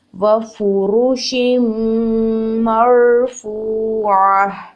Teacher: میم کی حرکت کو لمبا نہیں کریں گے، فوراً را ساکن کے ساتھ ملا کر ادا کریں گے. اور را ساکن ہے، اس سے پہلے زبر ہے، اس کو فل آف ماؤتھ پڑھیں گے را کو · شین کے نیچے ہے زیر تنوین، نیکسٹ ورڈ میم مشدد ہے. دونوں ورڈز کو آپس میں اچھے سے مرج کریں گے اور غنہ ادا کرتے ہوئے پڑھیں گے. میم کے اوپر زبر ہے اور آگے را ساکن ہے.